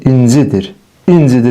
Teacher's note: Yəni vurğu düşür inin üzərinə. Şəxs xəbərli şəkilçiləri vurğu qəbul etmədiyinə görə vurğunu atır özündən əvvəlki saytın üzərinə.